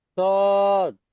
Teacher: সদ একটু একটু লম্বা করেন, একটু টান দিয়ে বলেন।